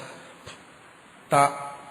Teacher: ത എന്ന് പറയുമ്പോഴത്തേക്ക് ശരിക്കും നാക്ക് പല്ലിന്റെ തൊട്ട് മേളിൽ തൊടും. പല്ല് വേണമെന്നില്ല, അതുകൊണ്ടാണ് അപ്പൂപ്പന്മാർക്കും ത എന്ന് ഉച്ചരിക്കാൻ പറ്റുന്നത്. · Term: ദന്തം